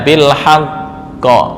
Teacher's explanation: karena sebelumnya berupa fathah maka pantulannya condong ke arah fathah